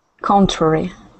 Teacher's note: contrary with the stress at the beginning